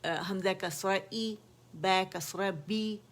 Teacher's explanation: ज़बान का दरमियानी हिस्सा रेज़ हो जाता है नेचुरली और लोअर जा नीचे ड्रॉप हो जाता है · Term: हरफ मकसूर